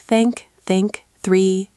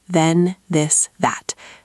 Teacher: For the voiceless th in think, you just blow air out. For the voiced th in this, you add voice while blowing air. >> So, you practice in front of a mirror, making sure your tongue tip is visible between your teeth, and you practice words with th repeatedly until it becomes natural.